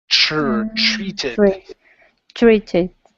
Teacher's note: the TR is more of a CHR sound.